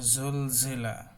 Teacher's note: জিহ্বার আগা নিচের দাঁতের সাথে গোড়ার সাথে লাগিয়ে ঝাঁঝালো শীষ। হ্যাঁ, এটা জুল জিলা, একটা শীষ শীষ ভাব থাকবে।